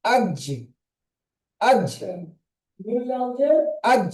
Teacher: জিহ্বার মাঝখান এবং তার বরাবর উপরে তালুর সাথে লাগিয়ে উচ্চারিত হয় জিম